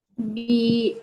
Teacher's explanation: bi pendek. Panjang sikit sebab A tu mat badan.